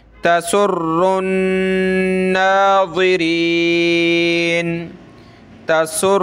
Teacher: تشدید ہے یعنی غنہ کرنا ہے، ناک میں آواز پیدا کریں گے